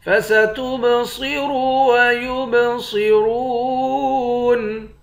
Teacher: تا کو با کے ساتھ ملا کر با پہ قلقلہ کریں گے · صاد اور را دونوں کو موٹا پڑھیں گے